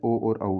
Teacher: तो कंठ और ओष्ठ से बोला जाता है ओ और औ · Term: कंठोष्ठ